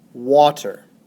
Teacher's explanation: The first syllable, wa, is stressed. The second syllable, ter, is unstressed.